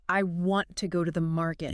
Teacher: The native way, the engineered way is to highlight the content words, >> the important words, >> the words that carry the meaning. So in that sentence, the important words are want and market. · The words to go to the don't just get quieter. They get crushed. They physically change shape. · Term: schwah